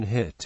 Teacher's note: The vowel sound in hit is a monophthong